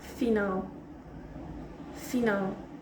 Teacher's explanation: o fi está bem, mas nal ouve-se muito mais.